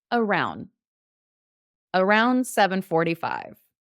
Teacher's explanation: when I'm speaking quickly we kind of drop the D